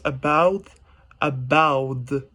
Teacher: english we pronounce the word about with the t sound but in the south pacific english there's no difference between the t and the d sound